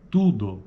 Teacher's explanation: esse U é uma vogal arredondada nesse caso Olha só como usa lábios são arredondados eles ficam assim né